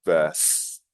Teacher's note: pay attention to the stress on the second syllable